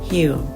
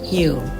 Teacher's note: ครูไม่ได้ใช้สระอีแต่ครูใช้เสียงอิ